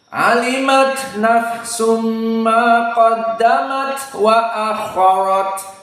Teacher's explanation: sifat-sifat alhuruf alimat ta Sakinah HAM akot ada empat tafkim Afwan ada empat alhams maka harus dikeluarkan nafasnya semua